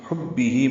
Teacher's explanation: ہا وسط حلق سے ادا کریں گے، با سے ملائیں گے، با کو جلدی اور معروف پڑھنا ہے